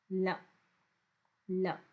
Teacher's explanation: दंत है, पार्श्विक है, ये तो सबको पता है। ल कई जगह पे ल दंत से कहा जाता है, इसीलिए इसको दंत मूल के नाम से भी जानते हैं